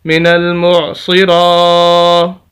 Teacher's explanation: یہ را کے اوپر کھڑی زبر، اس وجہ سے ہم را کو لمبا کریں گے